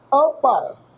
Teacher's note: ਐੜੇ ਅੱਖਰ ਤੇ ਹਲਕਾ ਜਿਹਾ ਪੋਸ ਦੇਵਾਂਗੇ ਜੀ